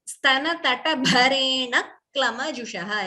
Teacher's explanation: Extra k is heard before klama. Dvitvam. Also, bha is mahaprana.